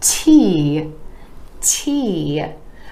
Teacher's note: Again, the E vowel sound coming after the T, T consonant. The T with the tip of the tongue coming behind the teeth to the alveolar ridge